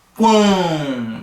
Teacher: Vê se você não consegue perceber que você está utilizando o seu nariz, né, vamos falar assim, para pronunciar essa palavra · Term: nasal